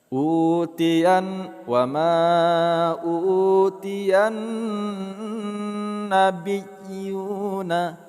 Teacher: Huruf nun berharakat tasjid kita ghunnahkan. · yu kita panjangkan 2 harakat.